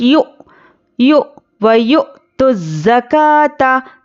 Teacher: حمزہ ساکنہ ہے تو حمزہ ساکنہ کو جھٹکے سے پڑھنا ہے